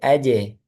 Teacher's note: Dan jim ini ee dia pangkal lidahnya tidak terangkat atau datar atau turun. Jadi dia tipis ya, bukan tebal. Sehingga qalqalahnya nanti tipiskan juga.